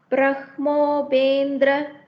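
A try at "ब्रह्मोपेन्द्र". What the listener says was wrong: ஆஹா, பிரம்ம கிடையாது. பிரம்மோ. I did tell a rule now. Whenever we have in and im accompanied by a ha akshara, then the in or ma shabda should come first, followed by the ha one. So it is Brahmo.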